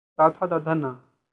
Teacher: दंतीय व्यंजन, जीभ का अग्रभाग हमारे ऊपर के दांतों को स्पर्श करती है।